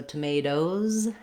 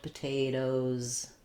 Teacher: when we make them plural, we add the Z sound. So tomatoes has the Z sound, potatoes also the Z sound for both of those.